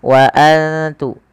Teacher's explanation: Kemudian wa antum, ada nun sukun yang tidak berharokat bertemu ta, kita baca dengan bacaan ikhfa, yaitu cara membacanya menyamarkan suara nunnya kepada huruf ta